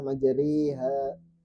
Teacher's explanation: Imalah itu bunyi antara fathah dan kasrah. Antara A dan I menjadi E. Yaitu memiringkan harokat fathah kepada kasrah dan alif kepada ya.